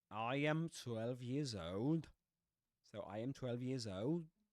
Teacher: We notice there that I has the price diphthong, right?